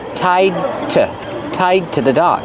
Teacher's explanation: And the word to is pronounced t.